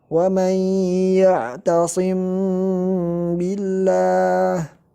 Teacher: Jadi yang tepat cara membaca ikhfa syafawi itu seperti cara kita membaca iqlab. Jadi dua bibir di rapatkan, tidak terlalu ditekan dan tidak juga dibuka, akan tetapi dirapatkan tanpa tekanan dan tanpa ada udara yang keluar dari dua bibir.